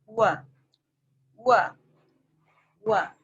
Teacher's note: yang keluar dari bibir adalah wa, dimanyunkan bibirnya.